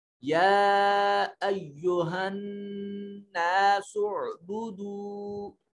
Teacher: نون مشدد ہے، یہاں غنہ واجب ہوگا